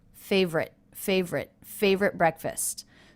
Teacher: the final T in favorite was pronounced as a stop favorite favorite favorite breakfast so there was no release of the · So there was no release T of the T sound.